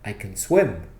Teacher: in a positive sentence, I can swim, don't stress the word can. Stress the verb after it. Stress the word swim.